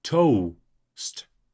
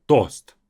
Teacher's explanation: In English, it's two vowels, toast, right? Russian is just simply toast.